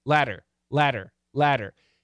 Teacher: the flap t is going to sound like a d a really really fast d it's got to be fast it's not a full vibrated d